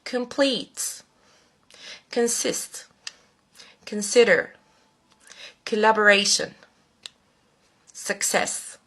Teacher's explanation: المقطع الأول من كل كلمة بيظهر بصوت شوا. صوت شوا من أضعف أصوات اللغة الإنجليزية على الإطلاق.